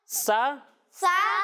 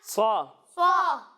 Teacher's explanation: سین کو ہم باریک پڑھیں گے اور صاد کو موٹا کر کے پڑھیں گے